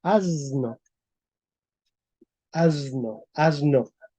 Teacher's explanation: la s se transformó en una Z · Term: sonorización